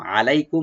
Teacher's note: কিতাবাল্লাহি আলাইকুম, আলাইকুম আইনটাকে রাইট দিয়ে, লাই এখানে হারফিলিন, মিম সাকিন আমরা এখানে জাহার করব, অথবা এখানে আমরা থেমে যাব, ওয়াকফ করব।